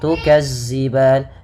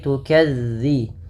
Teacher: ujung lidah ujung lidah menempel dengan gigi seri atas · melafalkan zalnya jangan diganti dengan huruf z jangan tukazziban tapi tukadzi bagaimana cara melafalkannya ujung lidah ujung lidah